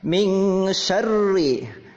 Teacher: Ini namanya ikhfa. Ya, nun mati bertemu dengan sin berubah menjadi eng. Ya, samar-samar.